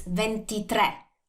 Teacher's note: the stress is on the last vowel and the sound is like slightly different because that's accented and also the spelling is different because we put the stress